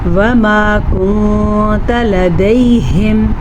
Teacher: وما کنت لدیہم، نون ساکن سے پہلے، نون ساکن کے بعد حروف اخفا میں سے تا ہے تو نون ساکن کو ہم چھپا کے پڑھیں گے اور غنّے کے ساتھ پڑھیں گے